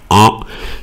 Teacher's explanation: C'est la lettre « en », c'est une voyelle. Et c'est une voyelle nasale parce que si j'appuie sur mon nez, je fais « en », ça vibre